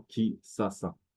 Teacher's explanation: le SH peut se prononcer s